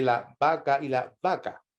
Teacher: la letra b corta y la letra b larga suenan igual en español no hay una diferencia fonemática